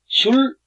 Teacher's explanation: 근데 슐 할 때 여린 히읗, 그 히읗자 위에 점이 없는 여린 히읗이라 하는데 이 슐 발음은 슐 이렇게 길게 나는 게 아니고 여린 히읗이 뒤에 있으니까 탁 끊어집니다.